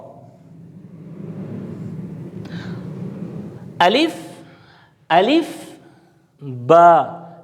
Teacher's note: جب ہم نے با ادا کرنا ہے تو ہم دونوں ہونٹوں کو آپس میں ملائیں گے